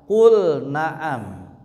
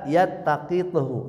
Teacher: Lam di sini lam sukunnya pada fi'il bertemu nun dan ta, maka bacanya jangan diidgamkan tapi baca jeel jelas.